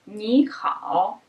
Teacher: In phrases like this, the first syllable changes into second tone, so it becomes second and third.